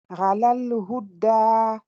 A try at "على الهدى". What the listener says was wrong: On dirait ça appuie un peu trop sur le dal. J'entends ala al-huda. Alors il n'y a pas de shadda. ala voilà, ala al-huda, le plus simple possible. Ala al-huda.